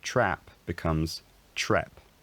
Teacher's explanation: trap becomes trep as these vowels raise